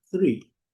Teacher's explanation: aquele som é com a língua entre os dentes, tem até o formato aqui, e pronuncia soltando o ar.